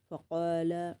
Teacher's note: یہ قاف کا ہیوی پڑھیں گے اور الف مدہ پورا اپلائی کریں گے